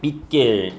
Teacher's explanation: 받침이 디귿으로 이제 발음이 됩니다